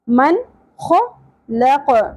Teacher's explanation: قاف ساکن ہو جائے گا وقف کی صورت میں تو قلقلہ بھی ہوگا